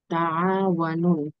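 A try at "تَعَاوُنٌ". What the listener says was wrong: না, ওয়াওর উপরও পেশ, হ্যাঁ।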